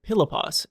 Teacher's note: it's a consonant and it's just like P but you put more air into it like it's aspirated